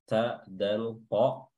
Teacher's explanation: ta, dal, ta memiliki makhraj yang sama, yaitu ujung lidah bertemu dengan pangkal gigi seri atas